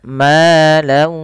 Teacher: Jangan hanya masuk saja, tapi perlu adanya gunnah